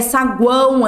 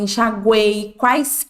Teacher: sempre vai ser vogal porque o na hora que nós falamos o a ele sempre vai ser mais forte do que qualquer outra vogal então ele sempre vai est ali no meio entre as duas